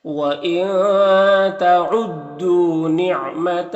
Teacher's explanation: نون میں اخفا ہوگا، دو میں واو مدہ ہے، ایک الف کے برابر کھینچیں گے، الف میں کوئی حرکت نہیں، اس کو نہیں پڑھنا.